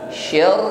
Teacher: ro tasydid ditekan, tapi tetap harus di sini ada sifat takrir, ya, bergetar. Syar getarannya tebal